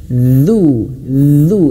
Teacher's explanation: ujung lidah kita ini dikeluarkan disentuhkan ujung gigi seri atas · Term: huruf dalnya